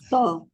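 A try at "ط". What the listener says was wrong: Bukan. Bila to dia jadi wow. To. To. Sebab dia bukan daripada kawasan mulut bibir, dia daripada kawasan lidah. Jadi bila kita kata to, okay, macam Kak Rogaya kata, kita kata to, lidah kita akan jadi macam ni.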